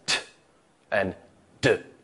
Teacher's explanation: you can tell the tip of your tongue is on that alveolar ridge